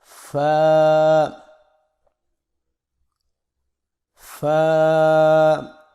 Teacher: سامنے والے اوپر کے دو دانتوں کے سروں کو نچلے ہونٹ کے گیلے حصے پر لگا کر باریک آواز میں پڑھیں۔ یہ حروف شفوی ہیں، یہ حروف شفوی میں ہے اور یہ ہونٹوں سے ادا ہوتا ہے، یعنی میرے ساتھ مشق کریں، فا فا۔